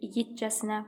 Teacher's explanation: İgidcəsinə vurğu igiddədir. Yəni ikinci hecadadır.